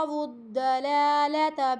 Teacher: یہ لام موٹا نہیں پڑھا جائے گا، دونوں لام باریک ہیں